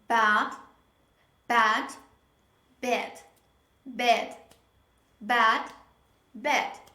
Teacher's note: the butterfly sound is between ah and e so when you pronounce this sound you half open your mouth not full half open your mouth and you say pay attention